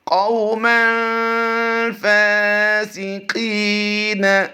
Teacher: قاف واو زبر قو میں لمبا نہیں کریں گے، واولین کا قاعدہ ہوتا ہے۔ میم دو زبر من میں، یہاں تنوین میں اخفا ہوتا ہے، غنہ کریں گے، اور قاف یا زیر قی کو ہم قاف کی ادائیگی پر کرتے ہوئے لمبا کریں گے، کیونکہ یہاں پر یا ساکن سے پہلے حرف قاف کے نیچے زیر ہے، تو اس لیے اس کو یا مدہ کرتے ہوئے لمبا کریں گے۔